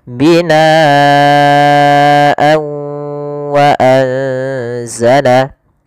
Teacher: Kalau di sini huruf setelahnya adalah huruf wau, maka tanwinnya kita masukkan kepada huruf wau kemudian ditahan gunahnya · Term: idgam bighunah, idgham bi gunnah